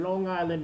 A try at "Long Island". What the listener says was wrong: No, Long Island. You have to put the G in there. Long Island.